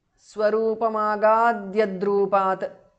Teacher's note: The tu in the end changes to d because of sandhi.